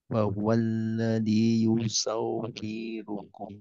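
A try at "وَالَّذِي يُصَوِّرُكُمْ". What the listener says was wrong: Nah, wi-nya kepanjangan hati. Yusawwirukum.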